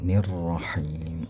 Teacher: Kemudian nirrahim, ra-nya tebal lagi, him ini ialah mutabi'i, tapi dia karena di akhir kalimat jadi berubah menjadi mad arid lisukun, ya.